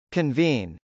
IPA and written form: kənvˈin (convene)